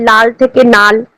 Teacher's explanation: ল ধ্বনিটা ধ্বনি বিপর্যয়ের ফলে ন ধ্বনিতে পরিণত হচ্ছে